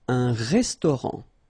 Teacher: Final T not pronounced.